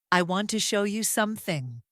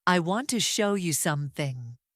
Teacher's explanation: Notice how the stress falls on the words want, show, and some. Everything else becomes lighter and faster.